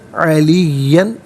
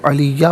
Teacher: सिद्क़िन अलियन, यहाँ वक्फ़ पढ़ेंगे तो अलिया पढ़ेंगे, 2 ज़बर की तनवीन वक्फ़ में अलिफ से चेंज हो जाती है